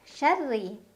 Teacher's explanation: Ra dibaca secara tarqiq karena ra berbaris kasrah. Jadi ra-nya ditipiskan. Tipis itu artinya lidah kita datar aja, pangkal lidah datar.